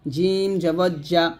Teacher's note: দেখুন প্রত্যেকটা হরফ আলাদা। জিম যখন উচ্চারণ করবেন জিহ্বার মধ্যখান তার বরাবর উপরে তালুর সঙ্গে লাগবে